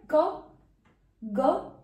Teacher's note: Contact between the tongue and the soft palate. Soft palate क्या है, roof of the mouth है लेकिन hard नहीं है, वो सॉफ्ट है। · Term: वेलर साउंड